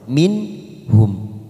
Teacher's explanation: nun sukun bertemu ha kita baca jelas tanpa mendengung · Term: izhar halqi, idhar halki